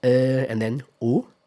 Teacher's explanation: So both are defong that's the same but they start from slightly different positions. So in British English the vowel begins with the neutral sound. So uh and then gradually moves towards oo.